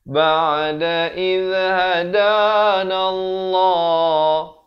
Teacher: Lafz jalalah di sini pula kita baca tebal. Kalau tadi nipis, di sini datang sebelumnya baris fathah.